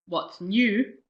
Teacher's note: the stress is on the new